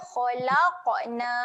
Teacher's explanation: Selalu huruf qaf yang mati ni selalu orang akan terlepas bunyi lantun dia.